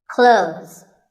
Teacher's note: Well, first of all, this word is not cloths. When we say clothes, the TH in the middle can often be silent. Clothes. But it's not wrong if you say these letters with a the sound.